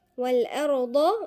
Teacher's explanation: والأرض الضاد من عند مخرج الأضراس